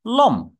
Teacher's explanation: ল এর সঙ্গে একটা অ থাকলেও কিন্তু ম এর সঙ্গে কোন স্বরধ্বনি উচ্চারিত হচ্ছে না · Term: ব্যঞ্জনান্ত